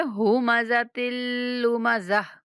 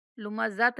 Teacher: ویل لکل ہمزۃ لمزہ، ہمزہ لمزہ، یہاں پہ غنہ نہیں کریں گے اور گول تا کو وقف کی صورت میں ہا سے بدل دیں گے تو ہم پڑھیں گے ہمزۃ لمزہ، لمزۃ نہیں پڑھنا